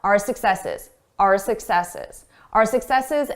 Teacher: I did not pronounce this as our. I said R. A very reduced sound.